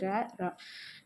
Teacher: நாவோட நுனி மேலெண்ணத்தின் முதல் பகுதியை தொட்டு வருவதால் ரகரம் தோன்றும். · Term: இடையின ரகரம்